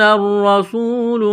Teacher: کے اوپر تشدید ہے، را کو دبانا ہے، موٹا کرنا ہے، سین میں سیٹی کی آواز پیدا کریں گے · واو ساکن سے پہلے پیش ہے تو حروف مدہ واو ہے، 1 الف کے برابر اس کو کھینچنا ہے